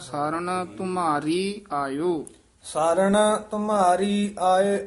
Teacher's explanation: ਮਮੇ ਨੂੰ ਭਾਰਾ ਕਰਨਾ ਰਾਰੇ ਨੂੰ ਭਾਰਾ ਨਹੀਂ ਕਰਨਾ